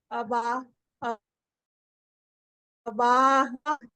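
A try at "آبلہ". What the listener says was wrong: नहीं नहीं, अलिफ नहीं है वहां पे।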